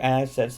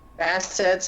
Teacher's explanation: stress on the first syllable of assets